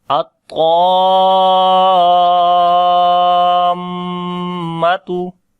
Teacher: we make gunna, which is the complete gunna, and it is clear like there is two letters.